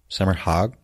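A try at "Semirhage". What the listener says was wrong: Semerhag. The H is silent.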